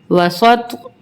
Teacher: اب تو پہ بھی ہماری آواز پلٹ کے آئے گی کیونکہ یہ حروف قلقلہ کا حرف ہے